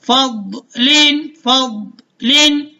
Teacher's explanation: زبان کا بغلی کنارہ، آج کے سبق میں ہم نے پڑھا بھی ہے، اور اوپر کی جو داڑیں ہیں وہاں پر جب زبان لگتی ہے تو حرف ضاد ادا ہوتا ہے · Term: ضاد کا مخرج